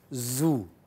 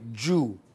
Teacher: in English, middle of the tongue rises and touches the hard palate